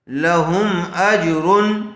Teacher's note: میم ساکن کے بعد با اور میم کے علاوہ یہاں پر حمزہ آئی ہوئی ہے، اس لیے اظہار شفیع ہوگا، میم کو ظاہر کر کے پڑھیں گے